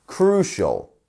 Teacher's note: crucial two syllables and our stress is on the first one